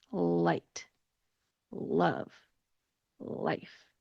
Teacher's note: the light L sound is when your tongue goes between your teeth